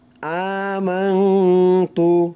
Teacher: আ এক আলিফ টান দিতে হবে